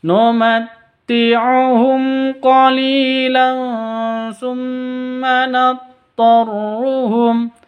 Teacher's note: mim mati bertemu dengan Q cara bacanya jelas karena izhar syafawi